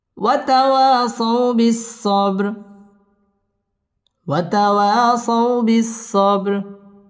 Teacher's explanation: সাউ বিস-সাব বা কলকলার হরফ ধাক্কা দিয়ে পড়তে হবে ওয়াতাওয়াসাউ বিস-সাবর র পুর হবে এবং এখানে ওয়াকফ করতে হবে